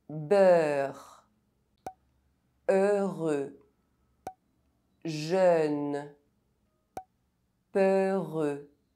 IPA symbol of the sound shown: œ